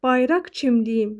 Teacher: yəni kar tələffüz olunacaq. Çünki özündən sonra samit gəlib.